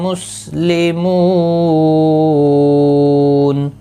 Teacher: مسلمون، مو واو مدہ ہے، ایک الف کی مقدار کے برابر کھینچ کر پڑھیں گے۔ اور وقف کی صورت میں نون ساکن پڑھا جائے گا، وقف بالاسکان ہوگا، مد العارض وقفی ہوگا، 3 سے 5 الف کی مقدار کے برابر کھینچ کر وقف کریں گے۔